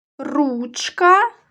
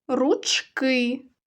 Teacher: коли ми говоримо про один предмет то в цих словах наголошується перший склад А коли багато наголос падає на другий склад